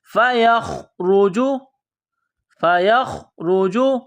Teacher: جس طرح انسان گلے سے بلغم نکالتا ہے اسی طرح خا کو نکالنا ہے